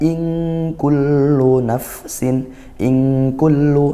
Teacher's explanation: Ikhfa haqqiqi. Dibaca samar dan dengung gitu ya